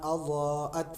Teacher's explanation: ضاد کے اوپر بڑی مد ہے، مد متصل، اس کو 3 سے 4 سیکنڈ تک ہم لمبا کر کے پڑھیں گے